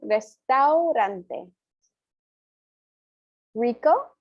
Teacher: the single r so this one you don't need to roll it is much softer than the r in english which is much more harsh it's almost like a d sound rather than an r sound